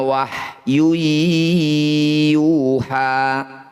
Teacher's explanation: illa Wahyu Yuha dumah tanwin bertemu ya disebut bacaan Idgham bunah bunyi dumah tanwinnya masukkan pada ya dengungkan dua harakat · bunyi nun sukun ini baca dengan jelas, tidak usah dengung. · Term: izhar halki